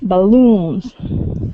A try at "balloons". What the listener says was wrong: so instead of B uh balloons it's Balloons with stress at the end